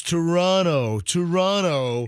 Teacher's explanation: i was told you don't pronounce the second t